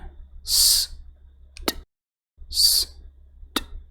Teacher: इन दोनों की साउंड भी वॉइसलेस है